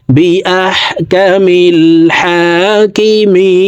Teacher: মি তিন আলিফ টেনে নুনকে সাকিন করে ফেলবো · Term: মদ্দা আরজি